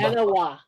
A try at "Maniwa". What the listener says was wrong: Maniwa, with the long e in the middle.